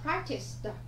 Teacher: Nó phát âm âm cuối âm sờ. Vậy thêm ed vào, chúng ta đọc là sờ tờ